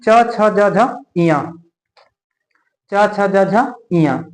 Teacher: और देखिए यहाँ पर दूसरी लाइन देखते हैं, च छ ज झ इया, च छ ज झ इया, तो च देखिएगा च छ जा झा इया, हमारे ऊपर ना मुख के ऊपर जो है ऊपरी सिरे में तालु होता है ना, तालु, हमारा जीभ ना जाके तालु को टच कर रहा है, तालु को। तो इसीलिए ना ये जो वर्ड बोले जाते हैं ये तालु से बोले जाते हैं। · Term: तालब